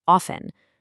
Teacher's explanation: notice how the T in often is usually totally silent. It's often.